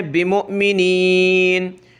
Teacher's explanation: یہاں ہم نے مومنین نہیں پڑھنا بلکہ حمزہ پہ جھٹکا دینا ہے